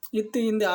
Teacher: இத்து இந்து இவ்விரண்டு எழுத்தும் நாவின் நுனி மேல்வாய் பல்லின் அடிப்பகுதியை தொடுவதால் பிறக்கின்றன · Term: இன எழுத்துக்கள்